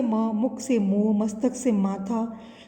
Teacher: यह हिंदी की अल्प प्राण सघोष ओष्ठ अनुनासिक ध्वनि है।